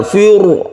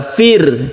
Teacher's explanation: di sini Firaun itu kita baca tipis atau partikel karena apa karena sebelumnya ada kasrah jadi membacanya tidak tebal Fur Bukan tapi yang betul adalah Fir Fit tipis cara menipiskan